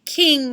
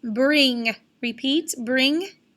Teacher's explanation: all the way in the back of your throat with the back of your tongue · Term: digraph ng